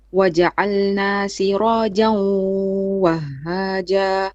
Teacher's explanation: Try to make it with a bit more ghunna, because you just did it without ghunna here.